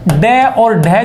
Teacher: इसलिए कहा जाता है क्योंकि इनके उच्चारण में जीभ तालु को बहुत दूर तक छूते हुए निकलती है, इसलिए इनको उत्क्षिप्त व्यंजन मतलब उल्टकर झटके के साथ इनका उच्चारण होता है। जीभ को उलटकर तालु के साथ स्पर्श करते हुए झटके के साथ इनका उच्चारण होता है